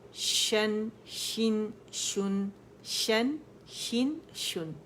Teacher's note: بہت سٹریس شین پہ نہیں دیں گے, دو شین نہیں بنائیں گے اسے